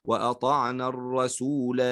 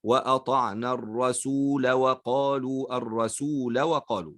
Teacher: يبقى ومعناه عندما يأتي على الألفات أن هذه الألف ثابتة فقط عند الوقف على الكلمة، أما عند الوصل فتحذف الألف، فنقول وأطعنا الرسول وقفا. وصلا تحذف الألف وننطق بلام مفتوحة فقط